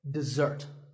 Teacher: this is dessert notice that the first syllable is dead and the second starts with a Z sound we stress the second syllable